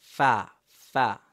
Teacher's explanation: নিচের ঠোঁটের পেট উপরের দুই দাঁতের আগার সাথে লাগিয়ে কি উচ্চারিত হয়